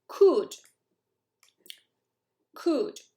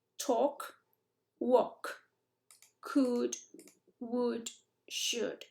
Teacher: No es una U española, pues suena distinto, pero could, would, lo mismo. La L, ni olerla.